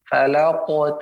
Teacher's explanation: qaf huruf yang memantul ya, dan dia tebal. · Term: qalqalah sughra